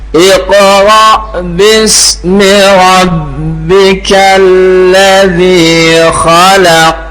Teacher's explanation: Huruf qaf termasuk huruf qal qalqalah. Ketika sukun harus kita qalqalahkan ya. · tidak boleh juga qaf itu dibaca dengan tipis ya karena dia termasuk huruf istila huruf yang tebal ya. Jadi enggak boleh tanpa qalqalah dan tidak boleh dibaca ti tipis.